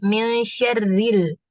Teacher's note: karena dia harokatnya kasroh, dia tuh tetap tipis.